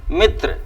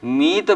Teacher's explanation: अहट में वह शब्द परिवर्तित होकर के मीत बन जाता है हरस ई का परिवर्तन दीर्घ ई में हो जाता है